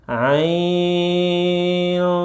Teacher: Jadi panjangi dulu empat atau enam harakat. Ain baru masuk ke eng ya.